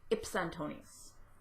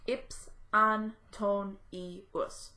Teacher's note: the E simply disappears from the pronunciation, and it also disappears from the meter. So when you see it written, it will be written with the E still there, but when it's pronounced, the E is gone, and the E will not show up in the syllables that count for the meter.